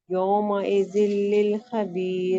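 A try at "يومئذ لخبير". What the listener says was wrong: نہیں، لل نہیں، یومئذ لخبیر.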